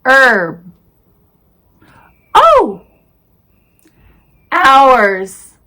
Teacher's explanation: nowadays we pronounce what without the h sound